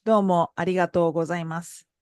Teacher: And as you notice, at the end, the mas sound, it's not masu, but it's mas. The u sound at the end of the phrase or before a voiceless consonant is devoiced.